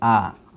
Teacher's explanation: विपरीत स्वर ऐसे स्वर होता है जिनके उच्चारण में मुख द्वार पूरा पूरा खुलता है। विपरीत स्वर जैसे होता है आ किए पूरा मुंह खुल गया, यानी कि ऐसे स्वर जिनके उच्चारण में मुख द्वार जो है पूरा पूरा खुलता है, ठीक है।